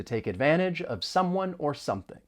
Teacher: we can link the phrase take advantage of and we're moving that consonant sound over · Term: linking